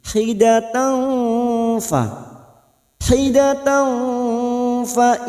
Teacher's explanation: Wahidatan tak marbutah yang berharokat fathah tanwin bertemu fa ikfa hakiki. Kita samarkan bunyi fathah tanwin pada huruf tak marbutah ini.